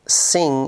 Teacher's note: Ng, the final sound in sing, is a velar nasal.